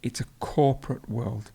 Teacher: To cope with something, and corporate. So the stress would be at the beginning.